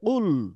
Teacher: আমাদের এই কুল কফটাকে মোটা করে পড়তে হবে